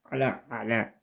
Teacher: ain itu adalah wastul khalqi atau huruf tengah tenggorokan